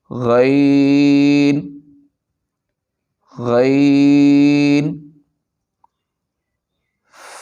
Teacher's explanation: غین حلق کے اوپر والے حصہ سے ادا ہوتا ہے۔